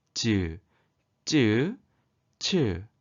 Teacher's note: 혓바닥과 입천장 앞쪽의 단단한 부분 사이에서 나는 소리입니다. 자, 혓바닥과 입천장 딱딱한 부분 있죠. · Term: 센 입천장 소리